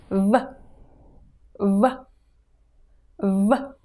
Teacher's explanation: It's pronounced like English V but much harder. Not like W in water and not like V in voice. Bite your lower lip and repeat after me.